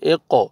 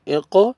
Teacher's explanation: پھر دیکھیں قوف آ رہا ہے، قلقلہ کریں گے